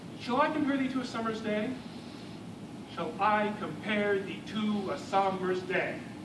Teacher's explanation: 5 pairs of syllables, alternating between unstressed and stressed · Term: iambic pentameter